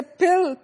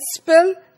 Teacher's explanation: So there is a puff of air known as aspiration in pill that is not present in spill. So when you say pill, you have aspiration sound, and in spill there is no such sound